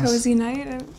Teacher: grammatical completion, and slightly rising intonation, as if he's asking her